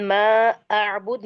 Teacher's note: मद जायज मुनफसिल हो रही है, और उसको 4 to 5 काउंट हम लंबा करके पढ़ेंगे या खींच के अल्हम्दुलिल्लाह, पढ़ेंगे।